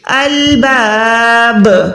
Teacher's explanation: बा साकिन हुरूफ कलकला में से है, तो यहाँ पर आवाज को लौटाएंगे, अलबाब, ऐसे नहीं पढ़ेंगे, बा को प्रॉपर लौटाएंगे, अलबाब, ठीक है।